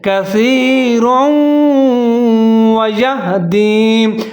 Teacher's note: रा के ऊपर तनवीन दो ज़बर, लेकिन आगे वाव फिर मुशद्दद है, वाव के ऊपर ज़बर है, रा और वाव दोनों को मिला के पढ़ेंगे